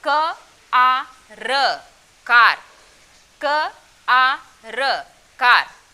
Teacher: लेकिन जब हम सी ए आर पढ़ते हैं, उस वक्त क्या हो जाता है? ए का उच्चारण आ हो जाता है, क आ र, कार, क आ र, कार।